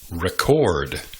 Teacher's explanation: You pronounce the verb by emphasizing the second syllable.